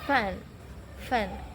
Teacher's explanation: bunyi ini termasuk ke dalam bunyi voiceless di mana tidak membuat pita suara bergetar